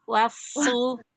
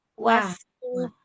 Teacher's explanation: Wawnya jangan jadi tebal ya